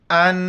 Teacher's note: تا میم پیش تم، اردتم، وَإِنْ أَرَدْتُمْ أَن، نون ساکن ہے، اخفا مال غنہ کریں گے، ناک میں آواز چھپائیں گے